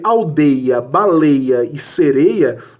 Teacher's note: os ditongos aqui não são abertos, são ditongos fechados